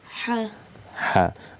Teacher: The makhraj of letter Ha is from the middle of the throat.